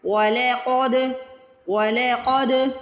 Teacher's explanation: اس میں قاف کو موٹا پڑھنا ہے، دال پہ قلقلہ کرنا ہے، دال کو ہلا کے ادا کرنا ہے